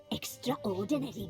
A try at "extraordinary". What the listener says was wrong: I have never heard anyone pronounce it as extraordinary. No one acknowledges the A in extraordinary.